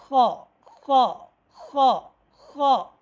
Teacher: اس کا مخرج یہ ہے کہ گلے کا ابتدائی حصہ، حلق کا ابتدائی حصہ، ٹھیک ہے، یہ جو ہے حلق ہماری جو پہلی جہاں سے گلا شروع ہو رہا ہے، ٹھیک ہے، وہاں سے یہ جو ہے حرف خا ادا ہوتی ہے۔ اور خا ادا کرتے وقت تالو میں ہلکی سی خراش کی آواز آتی ہے